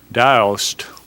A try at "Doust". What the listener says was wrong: The name originates in France, and the correct pronunciation is Daou, with the ST being silent.